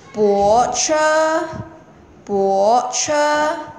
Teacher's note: 淡泊还有泊车是同样音的，它们是不送气的时候